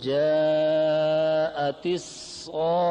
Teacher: جاء میں مد متصل ہے، اس کی مقدار 4 الف ہے توسط، اور صاخہ میں مد لازم کلمہ مثقل ہے، اس کی مقدار طول ہے، اس میں 6 الف کے برابر ہوگی.